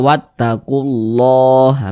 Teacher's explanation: Kalau membaca Al-Quran berjumpa dengan lafaz Allah sebelumnya ada huruf yang memiliki tanda baca dhammah, maka lafaz Allah dibaca tebal, dibaca tafkhim